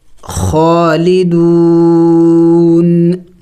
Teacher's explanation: وقف میں ہم نے اس نون کو سائلنٹ کرنا ہوگا یعنی ساکن کرنا ہوگا. خالدون، لیکن آخر میں نون کی آواز نکلنی چاہیے.